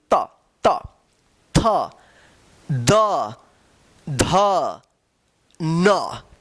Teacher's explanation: ठीक है, दांत के स्पर्श होने से होता है त। देखिए जीभ जो है ना दांत के बीच में आ रहा है, दोनों दांत के बीच में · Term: तवर्ग